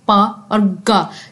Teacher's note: जब साउंड होती है तो हवा बिल्कुल रुक जाती है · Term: प्लोसिव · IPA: /P/, /g/